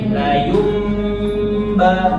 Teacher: Mati bertemu dengan ba. Jadi diubah menjadi mim. La yumba, dua harokat. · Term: iklabnya